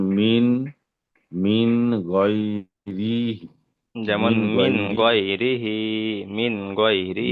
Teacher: হার নিচে খাড়া জের এসছে, এক আলিফ পরিমাণ টান দিয়ে পড়তে হয়।